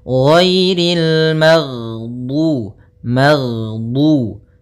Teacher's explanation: Jadi ketika melafalkan ghain, nafas kita tertahan, suara kita dialirkan. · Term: sifatnya adalah jahr